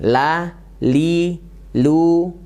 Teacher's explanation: lam itu pinggir sampai ujung lidah menempel ke gusi atas dan hurufnya tipis ya hurufnya tipis Coba kita praktekkan lah li lu Bal Bal